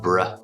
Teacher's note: that B sound is blended with the R sound, bruh. Like we say at the beginning of the word brother or breath or bromance or bridge.